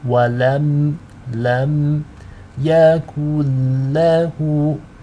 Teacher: The meme sakina is light and it's read with izhar or clarity.